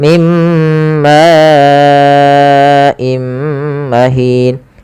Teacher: Karena datang setelahnya hamzah, maka ini kita panjangkan sepanjang 4 harokat. Maka dan tidak boleh kurangi, tidak boleh mim ma'im mahin, tapi harus panjang 4. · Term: mad wajib muttasil